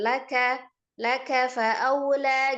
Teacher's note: Biasanya juga suka dinaikkan nilainya laka atau laka. Kafnya ataupun lamnya tidak dinaikkan.